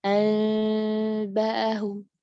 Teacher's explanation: jadi kejauhan jaraknya antara bibir atas dan bibir bawah, akhirnya gunnahnya terdengar jauh, salah. Jauh dari makhraj mim.